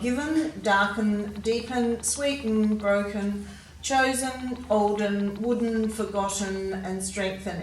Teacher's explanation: we've got the schwa sound represented by en at the end of all of these words